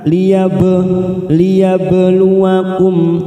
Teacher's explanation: Ada huruf ba sukun namanya qalqalah sugro, kita pantulkan